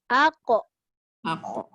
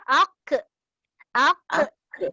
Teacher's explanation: Qaf mesti dilantunkan dengan memelihara isti'la. Aq. Kalau kita baca ak, dia tak jadi isti'la dah. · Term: qalqalah